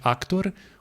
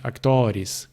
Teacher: o r final faz com que a vogal anterior fica curta · os substantivos que terminam com r o o fica curto do nominativo mas fica longo nos outros casos porque o r já não é mais a última consoante da